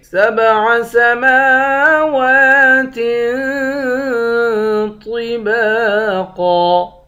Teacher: سبع سماوات طباقا، میم اور واو ان دونوں پر کھڑا زبر ہے، ان دونوں کو ایک ایک الف کے مقدار کھینچیں گے